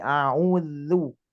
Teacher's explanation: ujung lidah menempel ke gigi seri atas